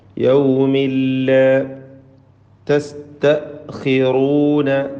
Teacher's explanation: യൗമിൻ എന്ന തൻവീൻ ശേഷമുള്ള ലാമിൽ മണിക്കാതെ ലയിപ്പിച്ച് ഉച്ചരിച്ചു കൊണ്ട് ഓതണം. ഇദ്ഗാം ബിഗൈരി ഗുന്ന.